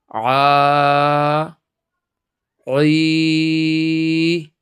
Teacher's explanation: تو سب سے پہلے عین کا مخرج، کہ عین کہاں سے ادا ہوتا ہے؟ عین بالکل حلق کے بیچ سے یعنی درمیان سے ادا ہوتا ہے